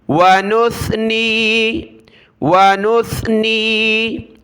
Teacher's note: جگہ سین پڑھتے ہیں، ونثنی، ونثنی، دیکھیں اس طرح نہ کریں، سین نہیں ہے، سیٹی کی آواز نہیں آنی چاہیے، زبان کی نوک دانتوں سے باہر نکالیں اور سا پڑھیں اس کو